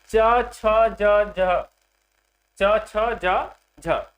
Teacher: च छ ज झ च छ ज झ इसे हम स्पर्श संघर्षी व्यंजन कहते हैं।